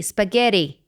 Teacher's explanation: the consonant that is used when American people for example say spaghetti it's not tea it's a sort of a mixture between an r and a d spaghetti it does this sound but if you say t um